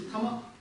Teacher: Как я уже говорил, К не произносится практически.